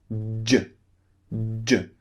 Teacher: your tongue first of all is pushing up and blocking air okay then suddenly your tongue is pulling down and releasing the burst of air so that's how this sound is made J so you're building